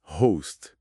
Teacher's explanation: host com o fechado, tipo o e home, que tem aquele ditongo ou